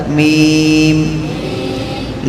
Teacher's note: मीम दोनों होठों के सूखे हिस्से से निकलता है। ये ऊपर का हिस्सा है ना, ये सूखा हिस्सा होता है, अंदर का हिस्सा कच्चा होता है।